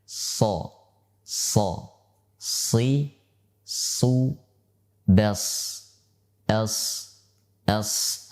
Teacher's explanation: Shafir adalah suara yang bertekanan, atau suatu udara yang keluar dari rongga yang kecil, karena adanya suatu rongga antara ujung lidah dengan ujung gigi seri bawah. Ketika kita mengucapkan so, so, si, su, bes, es, es, suara yang mendesis kecil, ya, itulah yang disebut dengan shafir.